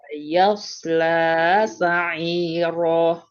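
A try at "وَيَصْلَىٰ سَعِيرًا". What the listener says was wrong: Panjang ayun sedikit. Wa yasla sa'ira.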